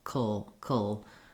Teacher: Then I pretty much don't say a vowel here at all in the last syllable. I go right from the K, the K sound to the ul sound, that dark L. That's called a syllabic L.